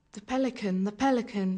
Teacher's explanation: none of us could say the without moving the tongue nor Pelican without bringing the lips together